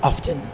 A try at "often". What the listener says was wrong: often. No, there's a T in there.